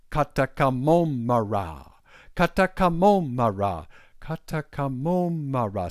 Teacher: So it's low, low, low, high, high, low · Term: high and low tones